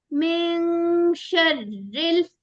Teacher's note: नून की आवाज ऐसे छुपानी है कि बिल्कुल जैसे शीन अदा होने वाला ही हो। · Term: आवाज छुपानी